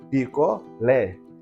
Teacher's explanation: A sílaba tônica é o lé. Portanto, é também uma oxítona, terminada neste caso em E.